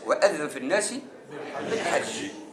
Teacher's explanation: حاء مرققة وبعدها جيم مرققة وشديدة